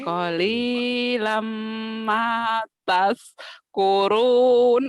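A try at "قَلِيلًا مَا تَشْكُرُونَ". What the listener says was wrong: Sinnya gede, sinnya gede, sinnya gede. Sinnya gede ayo. Qalilam ma tashkurun. Ayo, sin gede.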